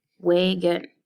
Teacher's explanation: So when words have 2 or more syllables, we usually say one syllable with more stress. The vowel in the quieter syllable sometimes has neither its long nor its short vowel, and that's where we get the schwa vowel sound. Wagon. When I read the second syllable with the short O vowel sound, the word does not sound correct.